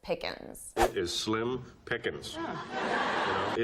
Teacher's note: Joey from Friends also drops the G and says it very unstressed